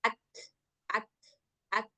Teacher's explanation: Kalau kaf ketika sukun enggak perlu diqqalqalahkan.